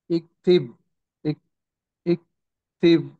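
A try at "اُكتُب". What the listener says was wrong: ఇక్కడ దమ్మ ఉంది. దమ్మ ఉంటే ఊ శబ్దం రావాలి. ఈ తా మీద కూడా దమ్మ ఉంది.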